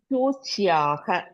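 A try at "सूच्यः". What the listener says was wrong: Not dirgha at the end. It is suchyaha.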